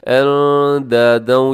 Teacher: اندادن میں اخفا ہو رہا ہے, نون ساکن کے بعد دال حروف اخفا میں ہے